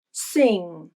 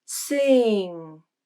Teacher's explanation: The I vowel becomes more nasalized because of the NG consonant, and that changes the way the I vowel sounds. It sounds more like A, sing.